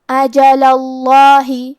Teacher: اجلا آخری میں کیونکہ لام پہ زبر ہے لہذا ہمیں لفظ الجلالہ مطلب کلمت اللہ کے لام کو موٹی آواز میں پڑھنا ہے